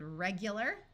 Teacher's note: this AR sounds more like ER because it is not accented